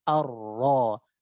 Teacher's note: Jadi huruf ra ini ada getaran. Ketika dia bertasydid getarannya sedikit, cuma satu getaran. Ar. Tetap ada getaran arro.